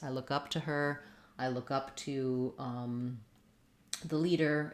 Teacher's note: we stress on the preposition rather than the verb, because that's what gives the phrasal verb its meaning.